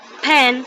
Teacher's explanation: When we pronounce the word pen, we uses both of our lips. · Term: bilabial